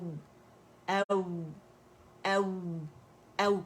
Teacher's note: complete rolling of the lips سے یہ ادا ہوتا ہے، اس کا مخرج ہی لپس کی رولنگ ہے